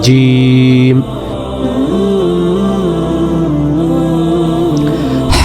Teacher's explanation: জিহ্বার মাঝখান থেকে শক্ত করে বলতে হবে